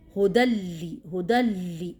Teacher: تنوین کے بعد لام آیا وہ بھی مشدد والا، تو کیا کریں گے ہم ادغام تو کریں گے لیکن بغیر غنہ کے